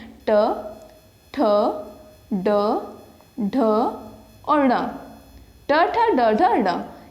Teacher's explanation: ट वर्ग के अंतर्गत जो भी वर्ण आते हैं वो हमारे मूर्धा के अंतर्गत हो जाते हैं